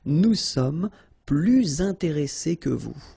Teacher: you make this little link, little liaison between the two, so you hear a little bit this S